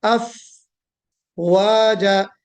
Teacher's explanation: वाव को निकालते वक्त होठों का गोल होना जरूरी है और फा पे हमस करना